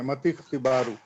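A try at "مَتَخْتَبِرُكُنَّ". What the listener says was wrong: नहीं नहीं कसरा नहीं पढ़ेंगे, ठीक है। मतख, हाँ मतख, सही मतख, ठीक है, मतख्तिबारुकुन्ना ये पढ़ना पड़ेगा, मतख्तिबारुकुन्ना पढ़ना पड़ेगा। इसको तो पढ़ नहीं रहे, लिखा जाएगा, पढ़ा नहीं जाएगा।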